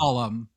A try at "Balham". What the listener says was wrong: No, they don't pronounce the ham usually.